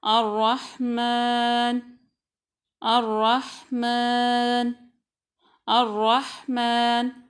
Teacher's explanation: را کو موٹا پڑھیں گے، میم کی آواز ناک سے نہیں آئے گی، جیسے الرحمن اس طرح نہیں پڑھیں گے۔